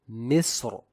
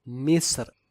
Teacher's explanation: one can recite the ra with either tafkheem as in Misr or tarqeeq, Misr. We have seen that as per rule number 3 of tarqeeq, ra is recited with tarqeeq if read with sukoon and before it there is a sakin letter other than a letter of isti'la with a kasrah preceding it.